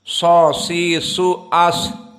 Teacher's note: di saat kita mensukunkan dia keluar nafas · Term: hams